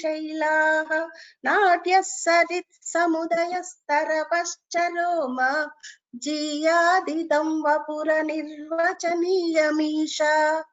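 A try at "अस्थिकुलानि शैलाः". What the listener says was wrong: Only this tha you have to give the mahaprana. Asthikula nishaila.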